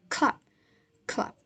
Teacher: the last is p that occurs in the final position preceded by a vowel and unaspirated.